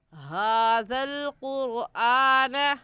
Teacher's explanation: रा साकिन से पहले वाले हर्फ के ऊपर पेश आ गई तो रा साकिन को पूरी यानी मोटा करेंगे। और मोटा करने का तरीका कि आपके दोनों होंठ गोल हो जाए